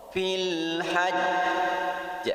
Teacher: Karena huruf jim yang disukunkan ini bertasydid. Huruf qalqalah jim yang disukunkan bertasydid, maka pantulannya lebih kuat dari qalqalah kubra. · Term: qalqalah akbar